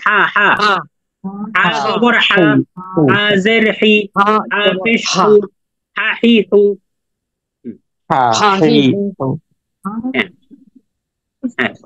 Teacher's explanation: হা গলার মাঝখান থেকে